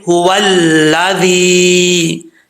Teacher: هو الذی، اب یہاں پر واو کے بعد جو ہے وہ لام آ رہا ہے، واو کو لام سے ملائیں گے، بیچ میں جو الف ہے وہ گر جائے گا